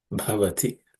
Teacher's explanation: the first letter B is aspirated